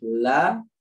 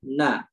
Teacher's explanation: Kalau la itu di gigi, kalau na itu di gusi ya